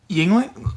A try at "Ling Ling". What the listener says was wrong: Ling Ling. The Y is silent.